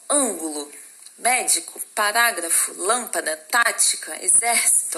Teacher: Porque a sílaba tônica dela está na antepenúltima sílaba, tá? Na separação silábica, a antepenúltima é a sílaba mais forte. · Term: proparoxítonas